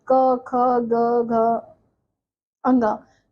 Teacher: कंठ पे हमारा जीभ का स्पर्श हो रहा है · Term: क वर्ग